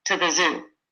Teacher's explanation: it's very unstressed and said kind of quickly and Blended together